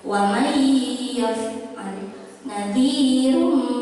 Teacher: idgham bi gunnah itu harus dibaca dengung. Jadi ada sedikit dengung.